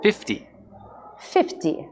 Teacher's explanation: A sílaba forte é a primeira.